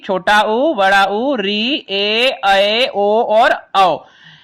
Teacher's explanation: इन सभी स्वरों के उच्चारण में जो श्वास वायु है वो बिना किसी रुकावट के मुख से निकलती है